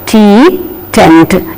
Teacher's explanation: T sound also is aspirated in the beginning. The initial T is aspirated, as in the words tea, tent, etc.